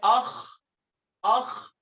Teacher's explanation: گلے کا جو بالکل اوپر والا حصہ منہ کے قریب ادنا حلق، وہاں پہ آ کے آپ کو معلوم ہوگا کہ یہاں زور پڑ رہا